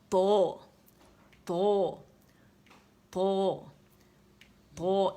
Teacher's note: جہاں سے دال ادا ہوتا ہے تا ادا ہوتا ہے، اور یہ تو بھی وہیں سے ادا ہوگا